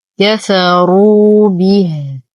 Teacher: نقف على الهاء بالإسكان. وحال الوصل لدينا صلة صورة بمقدار حركتين.